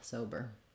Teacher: for sober we have first syllable stress there's our o again so it's a diphthong we're holding that longer as well and then the letters er just say that unstressed